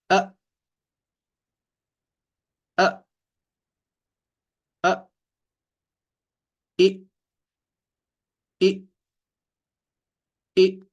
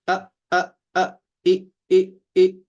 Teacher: حمزہ کی آواز سخت اور جھٹکے والی ہوتی ہے